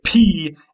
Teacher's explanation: It's a consonant that you stop the air very briefly and then you blow it out in a puff from your mouth. So P is a stop consonant because you say P and you stop the air and then blow it out.